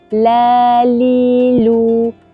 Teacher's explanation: Kita angkat kan makhraj lidah ni bila nak sebut huruf lam. Jadi lidah di hadapan ni menghalang laluan angin, menyebabkan angin tersebut melencong ke kiri dan ke kanan. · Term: sifat al-inhiraf